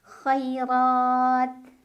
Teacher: Ra dibaca tafkhim karena ro berbaris dan barisnya di atas. Jadi bacanya tebal, kita taikan pangkal lidah kita.